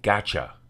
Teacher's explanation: It's the combination of two words, got and you. The CH sound is a result of the T sound gliding into the Y sound.